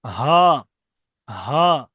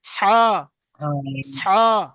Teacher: ছোট হাটা উচ্চারণ হবে গম্ভীর ভাবে, অর্থাৎ কণ্ঠনালীর নিচের ভাগ থেকে হা।